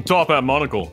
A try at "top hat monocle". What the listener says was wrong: Top end monocle? Top hat monocle. I thought you said top end.